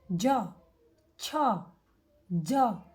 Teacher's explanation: તાળવા ઉપર જે બોલતી વખતે જીભ અડે છે એવા અક્ષરોને આપણે તાલવ્ય કહીશું